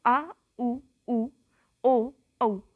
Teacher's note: पश्चिम भाग को उठाकर हम देखेंगे तो आ उ ओ औ, ये सारे क्या हैं, पश्चिम स्वर